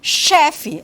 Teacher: Chá, que é uma consoante fricativa palato-alveolar não vozeada, como em chefe